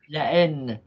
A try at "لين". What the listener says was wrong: الهمزة مش محلها. لين مثل بالدارجة فين وين بدل وأين تلفظ وين فأين فين. نفس الشيء هنا تلفظ لين فقط.